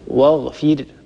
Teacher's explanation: الراء ساكنة، مكسور ما قبلها، إذن هذه الراء مرققة